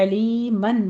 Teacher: علیمن میں عین کو وسط حلق سے ادا کرتے ہوئے آگے یا مدہ ہے